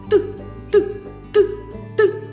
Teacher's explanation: Ніяк він не співається. Мій язичок б'ється за верхніми зубками. І тільки тоді поштовх повітря виходить. Отже, звук цей заспівати я не можу. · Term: приголосний